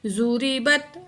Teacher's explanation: را زیری، را کو باریک پڑھیں گے